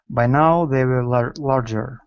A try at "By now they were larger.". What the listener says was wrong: Give me a good W here as well. Instead of woo, were. By now they were larger.